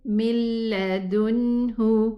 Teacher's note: There's no ghunna. So this means that there is idgham kamil, total idgham with the lam. This is why there is a shadda.